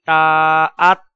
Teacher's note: تا حروف قلقلہ میں سے نہیں ہے تو تا کو ادا کرتے ہوئے آواز میں جنبش پیدا نہیں ہونی چاہیے، بلکہ تا کو سکوت اور خاموشی کے ساتھ ادا کریں گے، جیسے حمزہ زبر طاعت، حمزہ زبر طاعت، اس کو یوں ادا کرنا غلط ہوگا، حمزہ زبر طاعت، تا میں قلقلہ نہیں ہوگا، جنبش پیدا نہیں ہوگی، آواز کو روک دیں گے۔